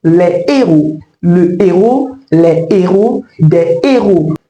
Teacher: la consonne H aspiré devant ce mot bloque la liaison